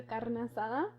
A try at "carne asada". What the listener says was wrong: why did you roll the R? Carne asada. Carne asada. Don't ever roll your R's, please. Yeah, none of this.